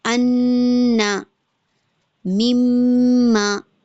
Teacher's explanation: نون اور میم کی جو وائس ہے، ٹھیک ہے، ناک سے ہو کر جاتی ہے، وائبریٹ ایک رہتا ہے اس میں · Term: گنہ